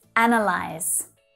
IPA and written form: 'ænəlaɪz (ANAYLYSE)